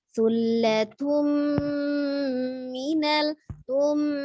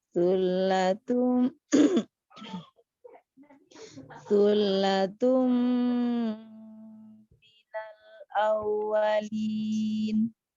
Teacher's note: Ketika dia gunnah, suaranya masuk ke rongga hidung ya.